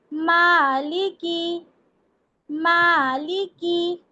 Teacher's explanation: मीम ये दोनों होठों के आउटर पार्ट से अदा होता है। जब दोनों लिप्स के आउटर पार्ट मिलते हैं तब मीम का मखरज अदा होता है। · جب دونوں لپس کے آؤٹر پارٹ ملتے ہیں تب میم کا مخرج ادا ہوتا ہے